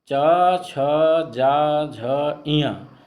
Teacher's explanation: ये तालु का स्पर्श करते हैं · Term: तालु वर्ग के व्यंजन